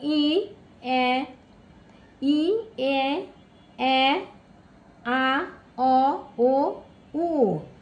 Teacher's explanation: স্বাভাবিক অবস্থায় থাকে কোমল তালু অর্থ হচ্ছে উপরের তালুর অংশ কিন্তু ধ্বনিগুলো উচ্চারণের সময়ে কোমল তালু খানিকটা নিচে নেমে গেলে কিছুটা বায়ুর নাক দিয়েও বের হয়। এর ফলে ধ্বনিগুলো অনুনাসিক হয়ে যায়। স্বরধ্বনির এই অনুনাসিকতা বোঝাতে বাংলা স্বরবর্ণের উপরে চন্দ চন্দ্রবিন্দু এযে চাঁদ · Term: অনুনাসিক স্বরধ্বনি